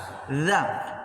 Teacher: Za ujung lidah menyentuh dengan ujung gigi seri bagian atas. Za. Maka dia akan keluar dari situ. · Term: huruf za